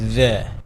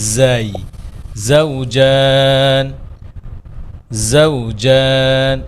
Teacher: জাল পড়ার সময় জিহ্বার টিপটা বের হবে